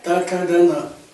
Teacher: जब हम त थ द ध न जब बोलते हैं तो हमारा जो जीभ है कहां टकराता है? हमारे दांतों से टकराता है, तो इसे कहते हैं दंतव्य।